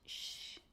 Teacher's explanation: Some places in Brazil, people pronounce the S as an SH. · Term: sh sound